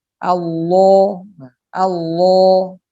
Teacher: pangkal lidah terangkat mendekati ke langit-langit mulut di belakang sehingga Cora menjadi gemuk tebal tua yang senyap entah jadi tua-tua